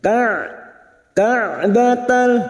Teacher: huruf Ain yang memiliki sifat tawasud dan jahr jangan samakan dengan Hamzah